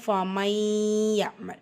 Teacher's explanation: நூனை மறைச்சி, அதாவது இணைச்சி ஓதுறோம். இணைச்சி குன்னா செய்கிறோம். இதுதான் பில் குன்னா.